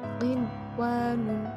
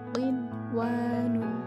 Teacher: Nah, di situ ada nun mati bertemu dengan huruf wawu, tapi dalam satu kalimat, maka nun matinya tidak dimasukkan ke huruf wawu, akan tetapi nun mati dibaca dengan jelas. Qin wa nun. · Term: idhar wajib